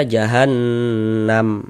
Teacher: Ini huruf mim ini di sini tidak dibaca panjang nih. Nah, berwakaf di huruf yang tidak dibaca panjang, hurufnya kita sukunkan sehingga kita baca jahannam.